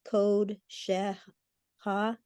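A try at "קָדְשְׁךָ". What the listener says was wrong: No, it's Ka. Yeah, it's Kad Shecha. Because ko would be a dot or above and a dot.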